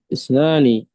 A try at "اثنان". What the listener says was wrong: اثنان بالثاء يا بالثاء الثاء، dua